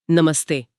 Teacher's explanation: अच्छा और नमः प्लस ते त बोलते समय जीभ दांत पर लगती है। तो विसर्ग भी उसी परिवार का दांत वाला सपेरे वाला स बन जाता है।